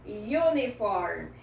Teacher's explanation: A palavra uniforme começa com a vogal U, mas esse U tem o som de U, uniform, que é o som da consoante Y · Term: semivogal